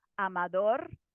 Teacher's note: where is that stress? And it's on the final syllable.